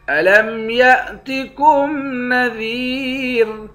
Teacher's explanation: دال کے بعد یا ہے، اس یا کو ایک الف کے مقدار کھینچ کر پڑھیں گے، یا حروف مدہ ہے، آخر میں را ساکن ہے۔